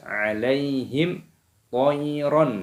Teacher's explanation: Wa arsala alaihim, ya sukun dibaca alaihim. Nah, mim sukun bertemu dengan huruf to, ini hukumnya dibaca idhar syafawi, dibaca jelas, jangan didengungkan alaihim toiron, tidak boleh, harus dibaca jelas alaihim toiron.